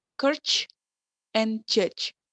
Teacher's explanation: And the next is affricative consonant, produced by a stop-like closure, followed by the slow release characteristic of fricative